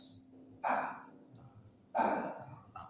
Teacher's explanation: Ta, ujung lidah dari permukaan atasnya bertemu dengan gusi gigi seri atas, ta. Dan dia tarkik tipis, ta, hatta.